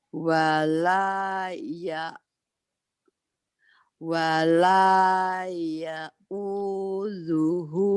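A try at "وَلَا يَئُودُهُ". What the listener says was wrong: dalnya keras. Ya uduhu. Dalnya nggak ada titiknya.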